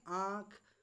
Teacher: अनुनासिक के उच्चारण में जो है मुंह से अधिक एवं नाक से बहुत ही कम सांस जो है निकलती है